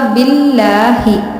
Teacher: اللہ کے لام سے پہلے زیر ہے اس لیے ہم نے یہاں پہ لام کو باریک پڑھا